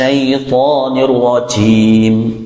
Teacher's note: Huruf jim ya. Huruf jim itu huruf yang keluar dari tengah lidah, bersentuhan dengan langit-langit bagian atas.